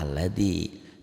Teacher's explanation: Artinya kalau nggak diwasol, kalau nggak disambung jadi bunyinya jadi a, alladzi. Tapi kalau disambung, kalau diwasol a-nya nggak ada itu ya. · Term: hamzah wasol